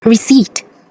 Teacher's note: the P is silent for this word